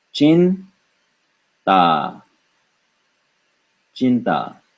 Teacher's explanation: ta is pronounced with the tip of the tongue touching the teeth, and so we have chin ta, chinta.